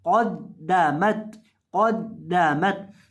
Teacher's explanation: कौफ दबर दाल कौद, दाल दबर दा कौद दा, मीम दबर तामत, कौद दामत। अब यहाँ कौफ को आपने मोटा करके पढ़ना है, कौफ को दाल के साथ मिलाना है, फिर दाल के ऊपर दबर पढ़नी है, तो दाल यहाँ मुशद्दद है, तो यहाँ दाल को सख्ती के साथ पढ़ेंगे और फिर मीम को ता के साथ मिलाएंगे, कौद दामत, कौद दामत।